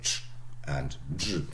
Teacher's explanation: The consonants ch and j are formed by a closure made between the tip and the rims of the tongue and the upper alveolar ridge and side teeth. The closure is released slowly with a fricative release stage. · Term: affricates